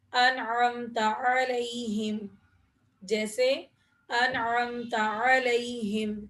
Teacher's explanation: تو یہاں پر نون ساکن کو ظاہر کر کے پڑھیں گے، یعنی بغیر غنے کے پڑھیں گے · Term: اظہار